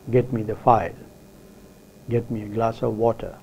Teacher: the use of falling tone in these sentences indicates an order or an authority on the part of the speaker